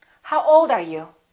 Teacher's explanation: wh questions have falling intonation